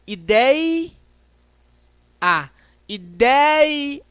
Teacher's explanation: O I é bem pequenininho no final do deia. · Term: decrescente